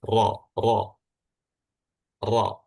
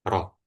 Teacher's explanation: Jadi pangkal lidah belakang itu dinaikkan sehingga suaranya itu kayak dalam gitu.